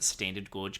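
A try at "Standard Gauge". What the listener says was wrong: Standard Gorge. You said Gorge.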